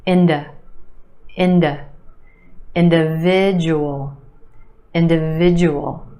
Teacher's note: The second syllable is where you have the schwa, d, d. Inda, inda.